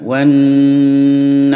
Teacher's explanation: dengung bacaan gunah jadi mendengung di hidung ditahan